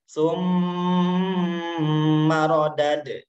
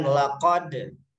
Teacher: Huruf dalnya mendapatkan harokat sukun, maka cara membacanya harus dipantulkan. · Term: qalqalah